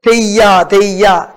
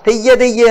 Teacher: யா என்ற ஒலி யா என்றுதான் உச்சரிக்கப்பட வேண்டும், ஆனால் குறுகி ஒலிக்க வேண்டும்.